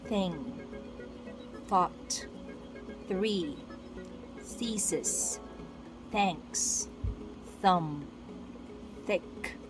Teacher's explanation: Voiceless TH, use air. No vibrations felt around your neck as you say the voiceless TH.